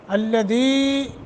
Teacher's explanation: हा हदई है सीने की तरफ से यानी अक़साए हल्क। अल्लदी या साकिन माक़बल कसरा हरूफ मद्दा थोड़ा लंबा करेंगे